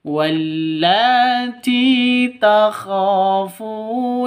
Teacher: Ti panjang dua ketukan karena ada ya mati diawali dengan kasroh, mad asli atau mad tabi'i. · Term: mad thobi'i